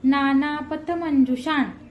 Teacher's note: शा वर जो अनुस्वार आहे त्याचा उच्चार न करायचा आहे